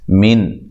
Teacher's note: نون ساکن کو ہلانا نہیں ہے، اور نون ساکن کا یہاں اظہار ہے، غنہ بھی نہیں کرنا